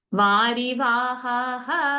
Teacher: Varivahaha, just leave it easy only. No need to drag ha with a pause and then visarga.